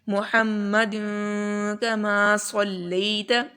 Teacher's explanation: تو یہاں پر اخفا کا قاعدہ اپلائی ہوگا، اس میں ہم لوگ آواز کو چھپائیں گے